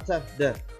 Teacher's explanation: Oh, kalau dia place of articulation maka bunyinya itu adalah f, b. Kalau dia dia plosive, dia place-nya untuk alveolar maka dia adalah t, d.